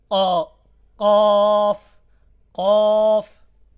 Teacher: অর্থাৎ উপরের, আমরা যে জিব্বার বরাবর যে উপরের দিকটা, মাথার দিকে যেটা, সেটাকে তালু বলে। জিব্বার গোড়া তার বরাবর উপরের তালুর সঙ্গে লাগাইয়া